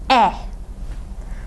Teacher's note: E is a front, unrounded vowel.